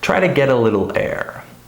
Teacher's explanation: So you'll notice that try is stressed, get is stressed, little is stressed, and air is stressed. So all of those words are pronounced normally.